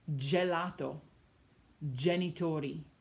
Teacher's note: So G before A, O, and U sounds like g, g, g. But G before E and I sounds like j, j, like the letter J in English